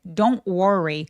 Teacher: 자, don't worry 할 때 don't worry.요 t 발음 안 하고요. N하고 t하고 같이 있을 때 t음 삭제.